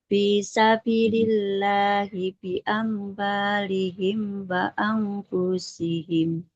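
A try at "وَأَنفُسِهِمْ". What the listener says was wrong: wa anfusihim, tidak wa anfusihim. Fa-nya dia dhammah tanpa ada wawu, maka tidak boleh dipanjangkan. Wa anfusihim.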